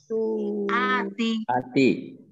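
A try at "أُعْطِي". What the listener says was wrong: Harokatnya jangan dirubah.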